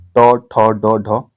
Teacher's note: ट वर्ग जो है मूर्धन्य में आता है